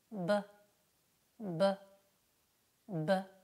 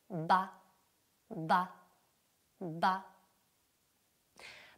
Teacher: quando apro le labbra la consonante esplode fuori · noi avremo le labbra che sono chiuse prima dell'emissione Le arcate dentarie sotto saranno chiuse la lingua sarà rilassata il velo Palatino sarà alzato e le corde vocali saranno attivate l'emissione di questa consonante eh È per via diciamo esplosiva cioè